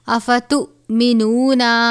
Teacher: افتؤمنون حمزہ اور جزم ایک ساتھ ہو تو حمزہ ساکنہ ہوتا ہے، حمزہ ساکنہ ہو تو جھٹکا دے کر پڑھتے ہیں